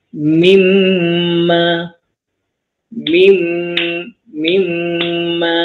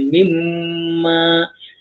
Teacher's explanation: Jadi kita baca nun mati bertemu mim akan jadi mimma mimma. Baca pun dah tutup mulut kan, mimma. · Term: idgham ma'al gunnah